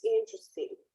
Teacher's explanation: The stress is in the first syllable.